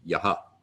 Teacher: the dot under the h at the end of a word at the end of a line means you echo the vowel prior to the h back